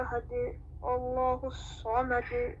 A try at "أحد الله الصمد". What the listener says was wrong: So don't say Allahu. Don't say Allahu, no, at. You have to, on top of that alif wasl in the name Allah, you have to imagine there's a little alif fatha to say at.